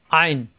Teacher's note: কণ্ঠনালীর মাঝখানে চাপ দিয়ে উচ্চারণ